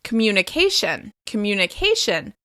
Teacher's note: communication is stressed on the second to last syllable. I find a lot of people struggled to say this word correctly because the emphasis will be on a different syllable in their native language.